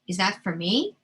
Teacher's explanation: You'll notice that my voice went up at the end. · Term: intonation